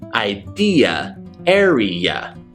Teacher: you've got the long e followed by ya ya like y u h ya ya idea area that's our